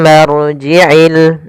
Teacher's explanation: Kemudian padafal tumma ada bacaan ghunah yaitu cara membacanya mimnya ditahan dulu m baru dibaca ma